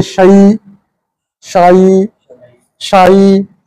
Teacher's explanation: पहले आवाज ऊपर जाएगी शा, फिर नीचे आएगी ई, शाई। अगर पढ़ेंगे शै, ये गलत हो जाएगा, ये कुरान का लहजा नहीं है।